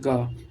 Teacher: क वर्ण के व्यंजन को हम कंठ से या कंठव्य से उच्चारण करते हैं।